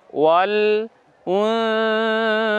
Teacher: নুন সাকিনকে উচ্চারণ করার সময়, হসন্ত উচ্চারণ করার সময় আওয়াজটা নাকের মধ্যে গিয়ে তারপর একে বলতে হবে, সা বর্ণকে বলতে হবে। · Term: গুন্না